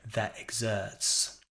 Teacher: a British speaker would very likely keep their tongue flat and sound more like that exerts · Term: non-rhotic